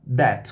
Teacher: esse fenômeno de transformar os dois sons do TH, que não tem só um, em T e D